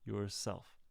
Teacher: Notice that yourself is 2 syllables. And the beginning of the second syllable, self, is an S, and it's not a Z.